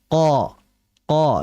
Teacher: Qo monyong tidak dimonyongkan melainkan qo dengan cara apa? Mengangkatkan pangkal lidah. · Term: huruf qo